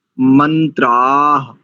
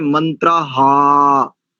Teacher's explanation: हमने कहा था मंत्राह, ऐसा आ दीर्घ आकार के उपरांत विसर्ग है, इसका शुद्ध उच्चारण आ के साथ अर्ध हकार